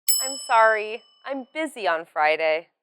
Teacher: you say the key words sorry busy and the time more clearly and still you use a falling intonation